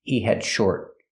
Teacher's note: We hear the D in had is a stop D. Not he had, but he had.